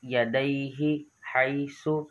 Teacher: یا ساکن سے پہلے زبر ہے، اس وجہ سے یا لین ہے اور اس کو ہم نے کھینچنا نہیں ہے